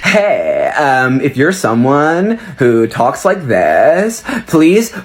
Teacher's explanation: rising the pitch at the end of sentences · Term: up talk